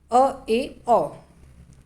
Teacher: अर्धविमृत, half open, नाम से स्पष्ट है, जहाँ पर उच्चारण में मुख द्वार आधा खुलेगा, हाफ ओपन, वहाँ पे अर्धविमृत होगा